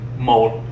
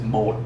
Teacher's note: when you have a dot below a vowel, the intent is that you're pronouncing that entire word lower